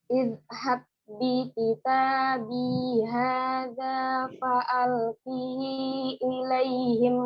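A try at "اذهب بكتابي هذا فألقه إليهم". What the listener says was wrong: Nggak panjang. Haknya itu nggak ada matnya nih, kolon ini nggak ada matnya. Kolon ya. Haknya ini nggak ada silahnya, fa'alqihi ilaihim.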